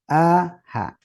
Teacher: tenggorokan terbagi tiga yang pertama tenggorokan bagian bawah ya yaitu apa huruf hamzah dengan Ha